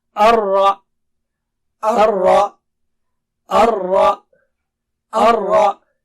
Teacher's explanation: Ra should be thick here and Ha sound should be clear